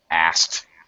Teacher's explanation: almost all native speakers actually pronounce asked as asked. In other words, we eliminate the K sound and just ST